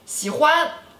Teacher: 喜欢, third tone, first tone